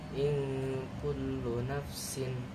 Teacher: Cara bacanya samar dekat dengan bunyi huruf ng